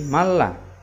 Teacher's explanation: Tetap melebur, namanya idgham, seakan-akan bertasydid, akan tetapi ya bila gunnah, tanpa dengung. Jadi bacanya tidak boleh dengung seperti idgham bi gunnah tadi ya, jadi harus lebih cepat. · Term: idgham bila gunnah